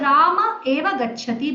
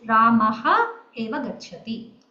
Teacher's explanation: The Visarga has dropped out.